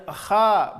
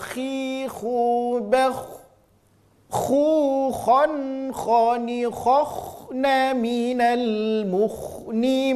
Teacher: Bunyi vokal huruf tebal adalah huruf o.